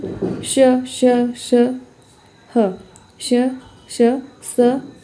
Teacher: इनको ऊष्म व्यंजन इसलिए माना गया है, इनके उच्चारण में घर्षण से उत्पन्न वायु का निष्कासन होता है। यानी कि इनके उच्चारण करने में ऐसा लगता है जैसे संघर्ष हो रहा है, आपस में आवाज़ें टकराती है, ऐसा होता है।